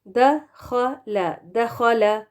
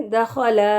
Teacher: زبر کو ہم نے لمبا کر دیا، لام کے اوپر جو زبر ہے اس کو